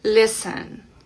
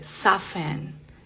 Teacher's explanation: la T no va a sonar en absoluto, aquí ni siquiera se detiene, sino que no suena para nada, silencio total. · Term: T silenciosa